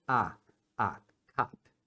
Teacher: Tem uma abertura grande da boca e faz um som de o só que abrindo a boca para falar um a